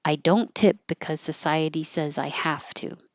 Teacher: because the next word is a voiceless s society, I'm going to stop my voicing early and just skip the z